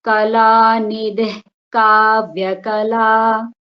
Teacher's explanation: That va is getting dvitvam.